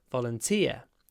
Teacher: A volunteer, stress on the final part of the word.